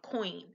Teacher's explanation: both of the vowels that are adjacent to each other are both pronounced and it's a specific sound as you transition from saying the first vowel to the second like for instance with coin you say the O and the